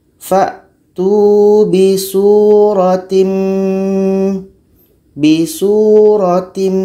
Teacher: Tanwin ini hilang, masuk kepada mim. · Kita masukkan secara sempurna. Tanwin masuk kepada mim. Maknanya hanya terdengar huruf mim saja. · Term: idgham kamil